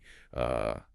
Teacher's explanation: If you focus your energy on pronouncing the stressed syllable clearly and loudly, all the surrounding syllables naturally relax into that quick, short, lazy uh sound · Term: schwah sound